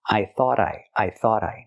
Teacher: We hear the T in thought at the end pronounced as a fast D because it's between vowels phonetically.